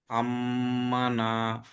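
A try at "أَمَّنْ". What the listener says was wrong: नहीं, नून सुकून है, अम्मन।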